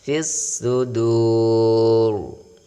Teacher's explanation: kedengaran seperti tebal ya, agak samar-samar, namun dipertahankan getarannya ya 2 getaran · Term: tafkhim